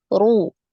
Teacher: Pangkal lidahnya tidak naik. Kemudian ru ini naik lagi. Pangkal lidahnya naik.